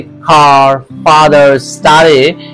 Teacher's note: কার ফাদার স্টারে এ উচ্চারিত হয় আ এর মত। লম্বা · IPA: /ɑː/